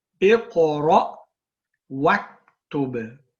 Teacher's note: when you join, remember you do not pronounce this hamza, so we say Iqra waktub, read and write. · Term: hamzatul wasl